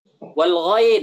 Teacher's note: Wal kha, paling atas, tenggorokan paling atas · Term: huruf halq